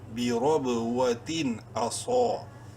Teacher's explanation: بی رب، واو زبر وا، تا دو زیر تین، جنتی بی رب و تین۔ اس تنوین کے بعد نیکسٹ حمزہ جو ہے وہ حروف حلقی میں سے ہے، اس لیے یہاں پر اظہار ہوگا، ظاہر کر کے پڑھیں گے۔ حمزہ زبر آ، صاد الف زبر صو، صاد کو منہ بھر کے پڑھتے ہوئے ایک الف کے برابر لمبا کریں گے۔